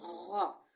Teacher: غین میں تھوڑا غراٹے کی آواز ہوگی